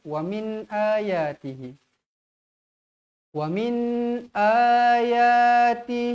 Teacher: nun sukun nun mati bertemu Hamzah Jelaskan dia